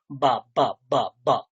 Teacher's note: পবর্গের যে ব, সেই ব কিন্তু দুটো ঠোঁট জুড়বে